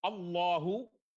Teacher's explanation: Allahu, lamnya lam mufakhamah